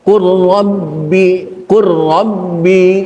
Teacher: karena memang ada lam mati yang kedua saya baca qubi qubi lamnya dihilangkan tidak ada lam · lamnya masukkan ke huruf ro maka di huruf ro timbul tasydid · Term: idgham mutajanisain, idgham mutajanisen